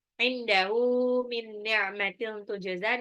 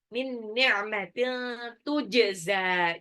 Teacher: nun sukun ketemu nun itu idgham bi gunnah. Tanwin ketemu ta ikfa.